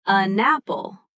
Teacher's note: It sounds like an apple. The N jumps over and attaches to the next word. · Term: Linking